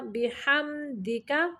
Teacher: یہاں پہ میم کو ظاہر کرنا، لمبا نہیں کرنا